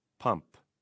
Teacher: the softer P at the end of pump is what we want